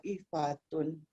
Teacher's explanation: Huruf taknya macam tak ada, langsung masuk ke to. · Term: Idgham mutajanisain